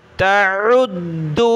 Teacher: عین کو گلے سے نکالیں، دال کو سخت کریں